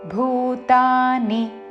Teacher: భూ భూతా రెండు దీర్ఘములు ని హ్రస్వము